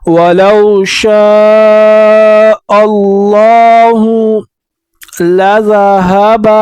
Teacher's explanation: شین کے بعد الف آیا ہے، اس کے اوپر مد آیا ہے تو 3 الف کی مقدار کھینچیں گے